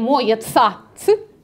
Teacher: Да потому что, друзья мои, это звуки аффрикаты. Каждый из них собран из двух других звуков. «Ц» из «ты» и «сы».